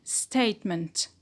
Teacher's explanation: Statement is the noun, and the stress is on stay